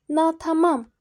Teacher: Natamam üçüncü hecaya düşür.